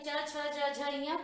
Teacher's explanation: ई चु यानी च छ ज झ य, पांचों च वर्ग का पांचों व्यंजन, फिर य और तालव्य श। ये हमारी ध्वनियां क्या है? तालव्य। इनको तालु की सहायता से बोला जाता है।